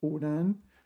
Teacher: And Hunan is third tone, second tone.